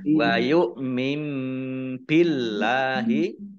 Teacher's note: nun sukun bertemu dengan huruf ba bacaan iklab dibaca membalik baknya dibaca mim terlebih dahulu ditandai ada mim kecil berdiri mim ya.